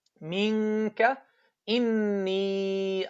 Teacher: The sound will come only from the ghunna, from the nose.